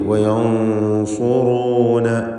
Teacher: വയൻസുറൂന റാഇന് ദമ്മ ആയതുകൊണ്ടാണ് തഫ്ഖീം ചെയ്യുന്നത്